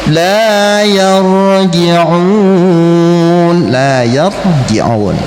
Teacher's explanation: La yarji'un, la yarji'un, ra-nya tafkhim, ji'un mad arid lisukun.